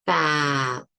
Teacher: if I say fat, the T I can't continue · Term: stop